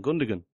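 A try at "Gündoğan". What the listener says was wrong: Yeah, please don't say that word, Gundogan. Yeah, it's Gundogan. Yeah, you don't pronounce the second G, it's got a thingy over it. Gundogan.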